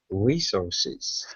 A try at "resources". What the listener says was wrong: give me an R sound instead of an U